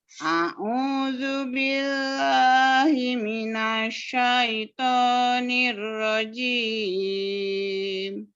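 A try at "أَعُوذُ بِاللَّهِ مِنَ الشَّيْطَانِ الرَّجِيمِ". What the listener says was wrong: Ainnya. Ingat ditekan huruf ain.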